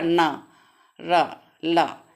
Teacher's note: जीभ ऊपरी मसूड़ों माने वर्त्स से स्पर्श करती, माने मसूड़ों से स्पर्श करती है, वर्त्स व्यंजन कहलाते हैं। जैसे ना, ना देखो मसूड़ों से कर रही है, ये बोलने में हो रहा ना, रा, ला, ये कौन से वर्ष व्यंजन, कौन कौन से, न र ल जो हैं ये वर्ष व्यंजन है।